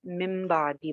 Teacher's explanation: नून साकिन या तनवीन के बाद अगर लेटर बा आ जाता है, लेटर बा यानी सिर्फ बा लिखा हो, तो क्या करते हैं, नून की आवाज को हम मीम में चेंज करके पढ़ते हैं। उसको कहते हैं इकलाब करना, यानी बदल के पढ़ना।